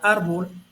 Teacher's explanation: tiene el acento en la penúltima sílaba o penúltima vocal, que es en la A.